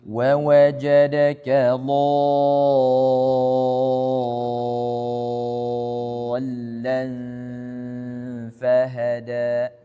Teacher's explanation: alif bertemu dengan tasydid, maka dibaca dengan panjang 6 harokat dan ditekan suaranya